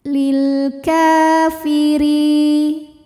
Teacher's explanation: Kemudian ada hukum alif lam qamariyah karena ada alif lam yang menghadapi huruf qamariyah yaitu huruf kaf. Dibaca lamnya jelas.